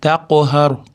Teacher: Taqhar qalqala, qof yo'g'on harf bo'lgani uchun yo'g'onroq qalqala beriladi